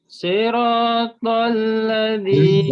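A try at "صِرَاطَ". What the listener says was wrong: Ulang, jangan si tapi tebalkan. Si. Nah, coba nanti dilatih pengucapan shad Pak ya. So, si. Ihdinas siratal mustaqim. Ya, untuk huruf shad ya, mohon dilatih huruf shad.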